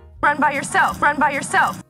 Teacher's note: instead of directly dropping at the end we are going to rise first and then we're going to fall just a little tiny bit at the end it doesn't matter if that last syllable is stressed or not